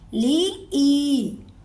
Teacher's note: या पर जज्म है और इससे पहले ज़ेर है, ये याए मद्दा हुई, इसलिए हमने ई को लंबा करना है।